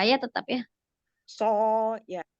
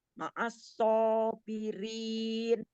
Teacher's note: Jadi meskipun ini huruf sofir dan istilah ya, huruf sot ini termasuk huruf tebal, tapi karena berharokat fathah, jadi mulut dibuka